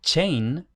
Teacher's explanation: en inglés todavía se pronuncie chain, con ch en lugar de she, como en francés actual